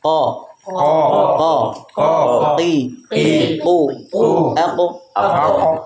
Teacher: Qaf itu keluar dari pangkal lidah menempel pada langit-langit lunak atas.